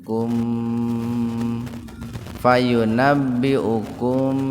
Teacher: Mim sukun ketemu fa secara terpisah. Jadi dibaca jelas di bibir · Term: idhar sfawi